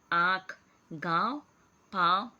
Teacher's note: अनुनासिक का उच्चारण नाक और मुंह से किया जाता है। इसका प्रयोग शिरोरेखा के ऊपर चंद्र बिंदु के रूप में किया जाता है, ठीक है, जैसे आँख, गाँव, पाँव आदि।